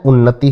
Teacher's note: तो पहले वर्ग का पांचवें वर्ग में परिवर्तन हो जाता है अनुनासिक व्यंजन के आने पर